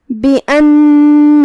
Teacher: کلمت بأن الف پہ زبر ہے تو ہم حمزہ کو اوپر سے ادا کریں گے. نون پہ تشدید ہے، 2 حرف کے برابر ہمیں نون کو پڑھنا ہے کیونکہ تشدید کی اصلیت 2 حرف ہوتی ہے.